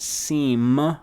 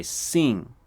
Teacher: Sing means yes, and it's not seem with an M. It's a ng sound, truly.